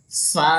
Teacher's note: ज़बान का सीरा और ऊपर के दांतों के किनारे से ये अदा होता है। तो आप ज़बान का जो किनारा जो है, ज़बान का जो सीरा जो है, यानी ज़बान को हमें थोड़ा सा जो दांतों के बाहर निकालना होता है।